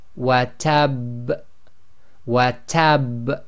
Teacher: And the last one here we have watabba, but if you're stopping at the end of the sentence you cannot read that last fatha, so the ba again becomes sakin, but remember it carries a shadda. So in this case it's going to be the highest intensity, so we'll say watab, watab. · you intensify the echo on purpose so you know that there was a shadda that wasn't actually read